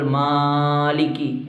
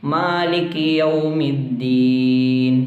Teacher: ചില ആളുകൾ മാലിക്കി നീട്ടാറുണ്ട്, അധികമായി നീട്ടാൻ പാടില്ല, തെറ്റാണ്. ഒരു അലിഫിൻ്റെ ഖദർ മാത്രമാണ് അവിടെ നീട്ടേണ്ടത്.